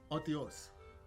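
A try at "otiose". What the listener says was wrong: No. Oshios. Yeah, the T is like an SH.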